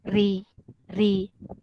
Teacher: Tadi kita untuk bacaan huruf ro tebal, sekarang kita masuk ro yang nipis, dibaca dengan nipis. Macam mana kita baca dengan nipis? Lidah tidak terangkat. Okey, tidak berat untuk menyebutkan dia. · Okey, jadi biasa kalau kawan-kawan kata ro tarkik bermakna itu adalah ro yang dibaca dengan nipis. Ro berbaris bawah, kita baca ri. Senang sebutan dia sebab dia nipis